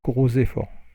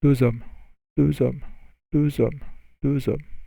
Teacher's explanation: For the words that terminate in S or X, you hear the Z sound